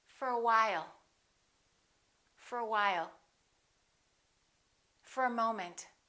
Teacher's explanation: Let's look at what happens to for. We reduce the O and it becomes a.